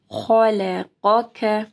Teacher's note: خا کو موٹا پڑھنا ہے، قاف کو موٹا پڑھنا ہے